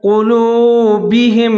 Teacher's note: قاف کے اوپر پیش ہے، اس کو موٹا پڑھنا ہے ، قلوبہم، بعض لوگ جہاں بہم پڑھتے ہیں یہ درست نہیں